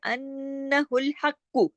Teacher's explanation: ये नून पे तशदीद है, यहाँ भी गुन्ना होगा, क्योंकि नून की जो तशदीद है वो ये बता रही है कि यहाँ दो नून है, ठीक है।